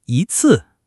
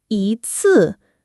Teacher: But in combinations, if it comes before a fourth tone word, it becomes second tone, like 一 次, one time.